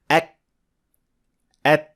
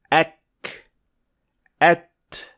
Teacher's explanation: the other letters, kaf and ta, also require a form of releasing air, which is called hams